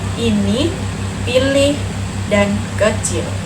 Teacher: lidah ditarik ke depan dan dinaikkan, mulut menyempit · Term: Vokal I